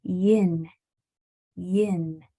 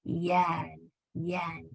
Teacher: If you open your mouth any wider in the middle, it's going to turn into yan. Yan. So make sure that your I is nice and narrow.